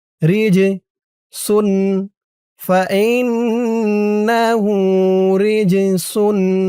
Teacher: ফাইন্নাহু হু উল্টা পেশ এক আলিফ টান আউ লাহমা খিনজিরিন ফাইন্নাহু রিজসুন রিজ র দিয়ে জিম ধরবে। এই জিমটা কলকলার হরফ ধাক্কা দিয়ে পড়তে হবে।